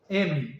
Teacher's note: tendo o som, né, de dois lábios